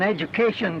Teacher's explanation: Education, so the D is palatalized.